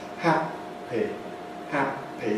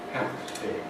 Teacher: You can see my lips coming together, staying together, separating. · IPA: [ˈhæpi]